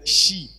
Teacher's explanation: le che, normalement, est prononcé plutôt palatalisé.